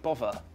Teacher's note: finally in the word bother it's become like a V sound